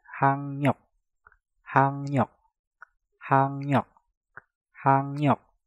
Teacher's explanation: Hak diakhiri dengan giok, setelah itu diikuti kata yang diawali dengan real. Giok yang ada di kata hak kita rubah menjadi ngieng dan realnya kita rubah menjadi nien. Maka cara pengucapannya menjadi hangnyok, hangnyok, hangnyok, hangnyok.